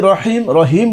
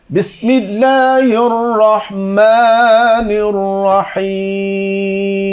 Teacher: হবে বিসমিল্লাহির রহমানির রহিম بسم الله الرحمن الرحيم রহিম হলো কেন রহিম হা চেপে বলতে হবে